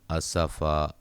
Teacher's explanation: وقف کی صورت میں دو زبر کو الف مدہ میں تبدیل کر دیں گے